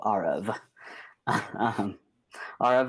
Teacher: to say your name it's pronounced aarov like the letter r emphasis on the first syllable and the second syllable rhymes with love